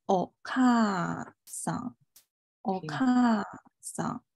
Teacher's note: 音是落下来的一个过程，如果它是从这里落的话，它是在一二三第三个假名上往下落了，它在第三个假名上往下落，那它应该是个三调音。哦，对，啊，所以的话它肯定是在咔上往下落。嗯， 它是在咔上往下落啊，它有一个落的降下来的过程，是从第二个往下降嘛